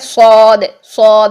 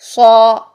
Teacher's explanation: لیکن اب صاد کے لیے دیکھیے، یہاں پر ہم جب ادا کریں گے صاد صاد، منہ بھر کے جب ادا کریں گے تو اے ڈبلیو کی ساؤنڈ آئے گی، او یہ ساؤنڈ آئے گی. اس کے لیے آ اور اس کے لیے او.